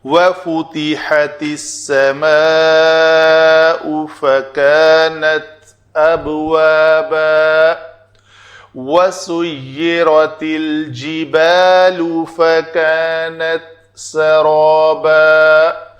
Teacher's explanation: سین، لام، حمزہ اور فا، یہ پیش والے حرف ہیں، ان کے اوپر بھی شفتین دونوں ہونٹ جو ہے نا وہ واو کی طرح گول ہوں گے